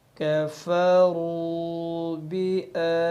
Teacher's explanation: کیونکہ کھڑی زبر الف مدہ کی طرح ہی ہوتی ہے، تو لہٰذا جب ہم تا پہ وقف کریں گے تو کھڑی زبر کو 2 سے 3 سیکنڈ کی مقدار کے برابر کھینچ کر پھر وقف کریں گے